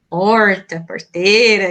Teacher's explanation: esse R bem retroflexo mesmo, né, uma característica da gente